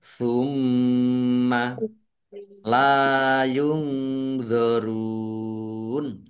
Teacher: Summa mim tasdid dibaca gunnah atau mendengung. Ditahan biar tampak mendengungnya.